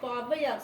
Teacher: சொல்லின் முதலில் வரும்போது ஒன்றரை மாத்திரை அளவில் ஒலிக்கிறது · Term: அவகார குறுக்கம்